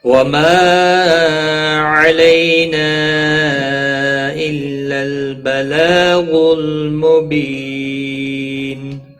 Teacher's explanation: مبی یا مدہ ہے، ایک الف کے برابر کھینچ کر پڑھیں گے۔ نون وقف کی صورت میں نون ساکن پڑھا جائے گا، وقف بالاسکان ہوگا، مد العارض وقفی ہوگا، 3 سے 5 سیکنڈ لمبا کر کھینچ کر وقف کریں گے